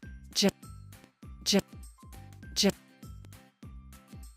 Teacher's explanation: Let the air flow out through the small space between your tongue and the roof of your mouth. Your voice is on, so you should feel vibration in your throat. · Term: j sound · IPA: /j/